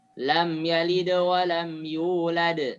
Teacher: qolqolah kubro pantulannya lebih jelas